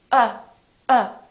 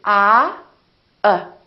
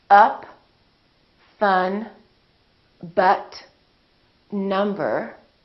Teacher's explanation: lips are neutral oh they're not doing it very much and my tongue is also neutral in the back but everything is relaxed there's hardly any movement in my face but it's almost like if you punch yourself in the stomach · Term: neutral sound